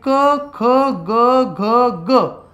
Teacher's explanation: जिभेचा मागील भाग वर उचलून कंठाला स्पर्श करताना ज्या वर्णाचा उच्चार होतो त्याला आपण कंठ्यवर्ण म्हणतो. यांचा उच्चार करताना जिभेचा मागील भाग हा कंठाला भिडतो म्हणून त्याला कंठ्यवर्ण म्हणतात.